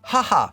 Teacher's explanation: you're not going to say it like ha ha in english with that much breath with that much air this is a softer sound